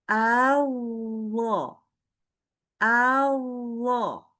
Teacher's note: Jadi dia itu baca ketika tasydid itu nggak berhenti suaranya.